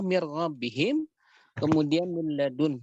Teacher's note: idgham yang kamil, yang sempurna bi ghairi gunnah, tanpa diberikan gunnah. Yang terjadi adalah ketika bertemu antara huruf idgham dengan lam dan ra. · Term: idgham bi ghairi gunnah